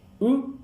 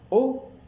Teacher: Si je dis U, je sens que ma langue est un peu plus en avant. Quand je dis O, il est un peu plus en arrière.